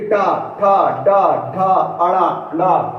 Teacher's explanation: यानी कि जो छत है ना, मुख के ऊपर जो छत है, इसका पिछला भाग मूर्धन्य कहलाएगा। और जब हम टा ठा बोलेंगे तो ये जीभ हल्की सी सिकुड़ेगी और पीछे वाले पे जाके लड़ेगी।